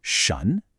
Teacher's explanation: Then we have sha, shun. This is a second tone, so your voice rises, almost like you're asking a question in English.